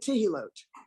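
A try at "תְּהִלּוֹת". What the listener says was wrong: Tehilot. You were right.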